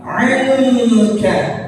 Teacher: Menjadi ikhfa. Ya, kita baca dengan gunnah dengung 2 harokat